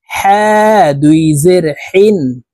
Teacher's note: হলুকের মধ্যখান থেকে পড়তে হবে কারণ হার মাখরাজ হালুকের মধ্যখান থেকে হবে